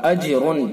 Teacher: اجرن جیم ساکن ہے، جیم کے اندر قلقلہ ہوگا چونکہ حروف قلقلہ میں سے قاف طا با جیم دال میں سے جیم ہے۔